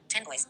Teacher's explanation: The n becomes m before b. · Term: assimilation